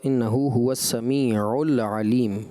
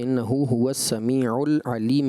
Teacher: لام ساکن اگرچہ ہے، اس میں کلکلہ نہیں ہوگا، غیر کلکلہ حرف ہے